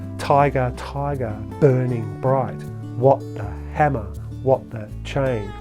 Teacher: much of the poem is actually written in trochaic stressed unstressed